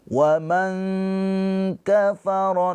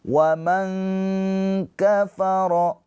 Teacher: nun sukun bertemu dengan huruf kaf ikhfa hakiki. Dibaca ditahan dua harakat ya. Waman kafaro jangan buru-buru.